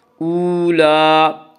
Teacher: لام کے اوپر کھڑا زبر ہے، کھڑا زبر کو 1 الف کے برابر کھینچ کر پڑھیں گے